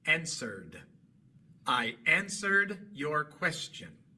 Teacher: El verbo es answer. Termina en r, un sonido sonoro, porque al pronunciar la r usamos las cuerdas vocales. Y entonces al agregar e d, la e queda muda y solamente pronunciamos la D.